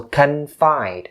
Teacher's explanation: make sure you stress the second syllable